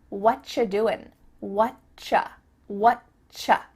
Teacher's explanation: we've cut out completely the word are, and the word you just becomes cha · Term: CH sound